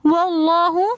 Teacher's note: لفظ اللہ سے پہلے زبر آ رہا ہے تو اس لیے ہم لفظ اللہ کو موٹا پڑھیں گے